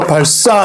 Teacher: 시옷을 예사 소리를 된소리로 발사 이렇게 발음하잖아요